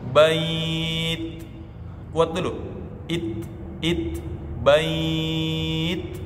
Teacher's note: Itu sudah bukan lagi hams, bisa jadi itu sudah bunyi suara yang mengalir. Nah, tidak boleh suara yang mengalir, tapi nafas. Ketika disukun, bait, kuat dulu.